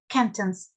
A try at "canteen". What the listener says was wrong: Canteen. It's it's a long E. Well, there's two E's. So canteen.